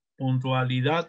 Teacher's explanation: la mayor fuerza de voz está en la sílaba dad, en la última posesión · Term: acento prosódico